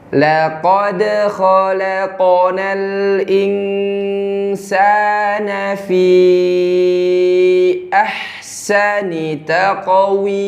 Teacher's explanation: La tipis, kemudian kokof tebal.